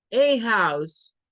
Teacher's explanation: se suele utilizar el sonido A en sustitución del schwa